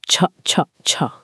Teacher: छ एक ऐसी ध्वनि है जिसे बोलने के लिए मुंह में हवा का भारी दबाव बनाना पड़ता है